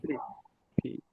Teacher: for the p of course the P you have contact between both lips